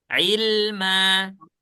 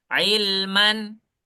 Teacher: dia yang seharusnya dibaca tanwin, ilman, tapi kita tidak baca tanwin. Kenapa? Karena kita wakaf di sini. Ya. Karena kalau kita wakaf sebelumnya ada tanwin, maka dia berubah menjadi fathah biasa, kemudian ditambah alif di depannya. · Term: mad iwad